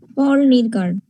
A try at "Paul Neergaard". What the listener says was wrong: নিরগার্ড না, নিয়ারগার্ড। পোল নিয়ারগার্ড। এর উচ্চারণগুলি শুনবা, পোল নিয়ারগার্ড।